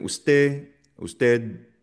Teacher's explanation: Hindi masyadong kinukumpleto 'yung D sound. Verdadal hindi masyadong D na madiin.